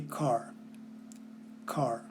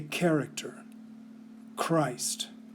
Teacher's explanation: the K sound in these last 2 words was accompanied by a puff of air. You didn't need to be taught this when you learned the alphabet, but you learned it when you learned these words because they come from Greek and they are pronounced as they were in their original language.